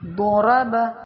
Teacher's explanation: ضاد کی آواز موٹی اور نرم ہوتی ہے